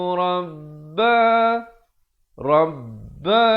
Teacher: ba itu bersabdu, tekankan dan dipanjangkan dua harakat, ada huruf mat di situ